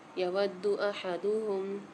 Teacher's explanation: یود احدہم، دال کے اوپر مشدد آ رہی ہے، واو کو دال کے ساتھ ملا کے سختی و جماؤ کے ساتھ پڑھیں گے